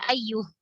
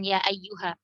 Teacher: Nah, kalau kita disuruh berhenti di sini atau kita terpaksa berhenti di kata ya ayyu, maka berhentinya ya ayyuh, tidak berhentinya dengan ya ayyuha